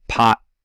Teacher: in a word like pot it can be unreleased, so there's no /t/ part to that T.